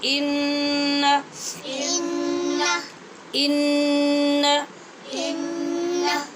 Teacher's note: غنہ کریں گے نون پہ مگر لمبا نہیں کریں گے